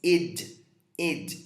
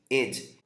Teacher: Eu não vou pronunciar o E como E aberto, é um id